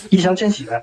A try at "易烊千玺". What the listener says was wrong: 你 怎 么 会 就 是 杨 跟 翔 你 都 分 不 清 楚 的 吗 ？